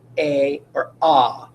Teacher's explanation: You should have noticed they're all making their ah sound, right? Ah, which is the broad sound.